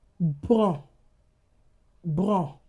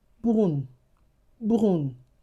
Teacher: That's nasalized. What if I add letter e to that word? It becomes bonne. bonne The nasalization has been removed.